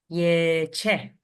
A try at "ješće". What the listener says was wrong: Yeah, with sh. Ješće. what happened there? You have jesti plus che. T falls out. You have jesće, and so we'll change to sh. Ješće.